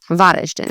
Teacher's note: the emphasis would be on the first part of the word, so Varaždin.